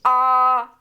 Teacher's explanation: आ, तो पूरा मुंह फैल जाता है, ओंठ कैसे? गोल नहीं रहते, फैल जाते हैं। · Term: आवृत्तमुखी